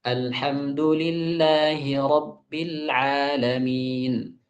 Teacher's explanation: Ba yang saya ucapkan tetap syiddah. Bibir tetap tertutup. Nah, akan tetapi juga tidak ada takalluf di sana.